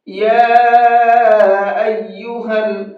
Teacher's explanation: یا کے اوپر یہ چھوٹا مد ہے، اس چھوٹے مد کو 1 سے 3 الف کے برابر کھینچ کر کے پڑھتے ہیں